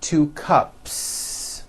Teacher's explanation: There's no voicing at the end of that word. The S remains unvoiced.